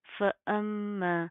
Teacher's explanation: میم کے اوپر شد آ رہی ہے غنہ کریں گے ناک کے اندر ساؤنڈ پیدا کریں گے ٹھیک ہے. اب یہاں پر کیا کہ ہم نے اس میم کو ڈائریکٹ اس لام کے ساتھ پلس کرنا ہے شد کی وجہ سے ٹھیک ہے.